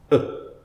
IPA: ə